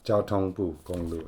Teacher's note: Jiāotōng, I think that's also first tone. Bu is fourth tone. Gong, I think, is first tone. Lu is also fourth tone.